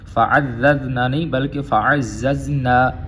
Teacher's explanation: زا جو ہے دونوں زا ان کو زا کی طرح ہی پڑھیں گے، ذال میں لے کے نہیں جائیں گے